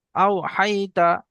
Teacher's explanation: ওয়াও সাকিনের ডান দিকে জবর এসছে, এটা হলো ওয়াউলিন। ওয়াউলিনকে নরম আওয়াজে তাড়াতাড়ি পড়তে হয়, টান দেওয়া নিষেধ।